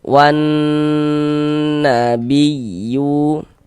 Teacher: Karena di sini huruf lam-nya enggak ada tanda bacanya ya enggak dibaca. Huruf lamnya enggak ada tanda bacanya ya, enggak dibaca kayak gitu langsung dimasukkan ke huruf setelahnya huruf nun ini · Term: idgham syamsiyah